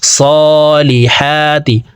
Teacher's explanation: সাদ খারা জবর স, লাম জের লি, হা খারা জবর হা, তা জের তি, সালিহাতি। হার উপরে খারা জবর আছে, তাই উপরের দিকে ধাবিত করে এই হা হরফকে এক আলিফ টেনেই পড়ব।